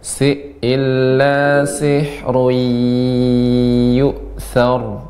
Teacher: sihrun bertemu dengan ya, langsung dimasukkan ke ya.